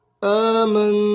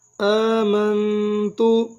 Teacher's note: میم کو نون کے ساتھ ملائیں گے اور غنہ بھی کریں گے. میم نون زبر من آمن تا پشتو آمنتو.